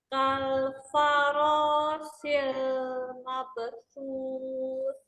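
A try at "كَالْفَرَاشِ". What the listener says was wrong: Itu shi. Kal faroshi.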